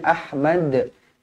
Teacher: Pastikan dibaca melantun dekat hujung ni. Ahmad. Qalqalah kubra.